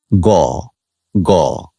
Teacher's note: এটি জীভমূলীয় পশ্চাৎ তালজাত বা কোমল তালুজাত। · ঘোষ ধ্বনি মানে হচ্ছে যেটিকে উচ্চারণের সময় আমাদের স্বরতন্ত্রে কাঁপে, অনুরণিত হয়। এটি জিহ্বামূলীয়, পশ্চাৎ তালুজাত বা কোমল তালুজাত।